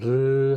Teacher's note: 혀 양옆으로 공기가 흘러나오기 때문에 유음이라고 한다.